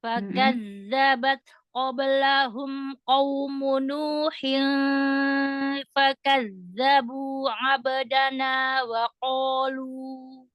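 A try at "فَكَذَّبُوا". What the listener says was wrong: Di awal kata nggak ada wawunya ya. Kadzabat coba lagi.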